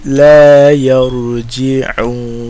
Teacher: عين, right, from the middle of the throat, and you put emphasis on the throat